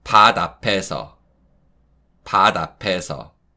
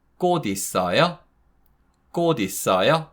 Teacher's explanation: it's the sound of unreleased 디귿 that links with the following syllable